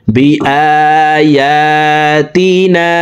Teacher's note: মদের হরফের উপরে চিকন চিহ্ন, বামে হামজা, মধ্যে মুনফাসিল, 3 আলিফ টানিয়া পড়িতে হয়।